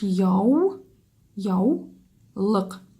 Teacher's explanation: когда мы произносим эти слова мы у произносим как согласную в